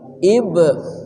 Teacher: Iblis qalqalah sughra. Qalqalah artinya memantul atau bergetar. Ba-nya dipantulkan dengan kuat.